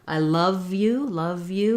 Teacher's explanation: We just go from the v to the y of you.